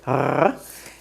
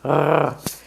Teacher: It's a rolling R, like in Spanish, r, but you bring the roll to the back of your throat, r, or like a dog growling, r. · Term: resh